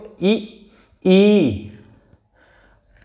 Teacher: अग्र स्वर यानी कि जीभ के अगले हिस्से से